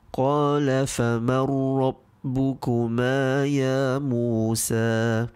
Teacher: the Nun Sakinah sound in Faman is not read. Instead, it is being merged with the next huruf that it meets, which is Ra. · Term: Idgham